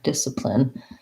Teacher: discipline first syllable stress the c is silent